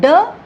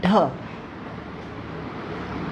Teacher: ढ जो है इसमें थोड़ा सा ह की आवाज़ भी आती है